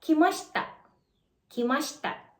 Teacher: may vowel devoicing ulit tayo, which is kimashita. Kimashita. Nawala si letter I sa shi.